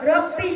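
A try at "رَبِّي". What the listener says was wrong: দাদুজান রব্বে নয়, রব্বি।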